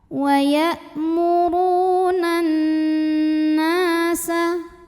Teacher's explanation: Alif lamnya dinamakan dengan alif lam syamsiyah karena alif lam menghadapi huruf syamsiyah yaitu nun. Maka alif lam tidak kita baca, kita lewat langsung masuk ke nun yang tasydid. · Huruf nun gunnah musyaddadah karena nun bertasydid. Cara bacanya dengung, bunyi n-nya tahan sampai ada suara masuk hidung. Madh bi'i dhahiri, karena ada alif yang didahului baris fathah, maka dibaca panjang nunnya 2 harokat.